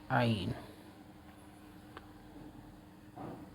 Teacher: درمیان حلق سے عین ادا ہوتا ہے